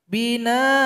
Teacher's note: kalau berhenti an ini hilang satu harokatnya dan dipanjangkan dua harokat atau dua ketukan. Binaan. Tapi kalau dilanjutkan, awa, wawnya dengung.